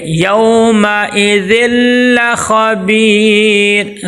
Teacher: تنوین کو لام میں داخل کریں گے لیکن بغیر غننے کے۔ یومئذ لخبیر، ذل خبیر، خا کو موٹا کریں گے اور با کے آگے یائی مد آ گئی ہے، ایک الف کے برابر لمبا کریں گے اور مد عارض وقفی بھی کریں گے۔